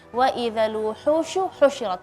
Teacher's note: Harf shin usahakan udaranya lebih menyebar lagi ya.